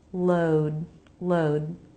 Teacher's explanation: We have two diphthongs here. First, an O diphthong, jaw drop, then lip rounding